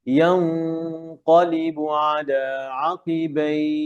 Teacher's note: গুন্না লেগে যাবে, মাখরাজ থেকে হবে ইয়াং, যেন ইয়াক না হয়, ইয়াও না হয়